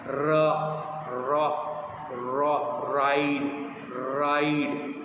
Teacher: Mouth को top part touch नहीं करेगी, लेकिन साइड से एयर के थ्रू वो आर साउंड निकलेगी ऐसे, र र र राइड राइड। आपकी टंग ऊपर आपके माउथ के जो टॉप है उसको टच नहीं कर रही, टॉप सरफेस को, लेकिन वो ऐसे कर्ल्ड है और साइड से जो है साउंड ऐसे मूव कर रहा है, एयर मूव कर रहा है और रा की साउंड निकल रही है, रा। · आपकी टंग ऊपर वाली जो सरफेस है आपके माउथ की उसको टच नहीं करेगी। The top part of your tongue does not touch the top of your mouth. Mouth को टॉप पार्ट टच नहीं करेगी, लेकिन साइड से एयर के थ्रू वो आर साउंड निकलेगी ऐसे, र र र राइड राइड।